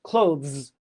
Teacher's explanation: There's that Zz sound, that buzzing sound. clothes. You don't say close, you clo say clothes.